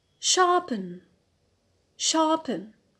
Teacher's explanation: So here the stress is on the penult. The penult, that is the second from the end.